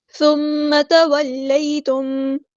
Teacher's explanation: پڑھیں گے، ثم تولیتم، سا کو نرمی سے ادا کریں گے، میم پہ غنہ زمانی ہو رہا ہے تو ایک الف کے برابر رکیں گے